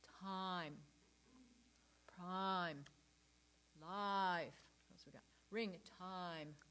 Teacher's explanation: all of these i words are the ah vowel